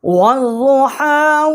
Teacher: اب یہاں ہم نے واؤ کو ضاد جو ہے اس کے ساتھ مشدد کیا ہے۔ واؤ کو ضاد کے ساتھ مشدد کرنے سے یہ حمزہ اور لام جو ہے یہ حذف ہو گئے ہیں